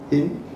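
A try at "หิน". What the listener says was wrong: Not hin. Hin. It's a rising tone.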